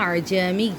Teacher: جو دوسرا حمزہ آتا ہے اس کو نرمی سے ادا کرنا ہے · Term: تحصیل